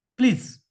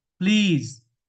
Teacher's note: E, just below close front unrounded vowel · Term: long E